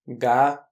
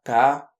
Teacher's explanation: La seule différence, c'est que le son G utilise les cordes vocales alors que le son que ne les utilise pas. C'est-à-dire que sans utiliser les cordes vocales, tu ne peux pas dire ga, c'est absolument impossible.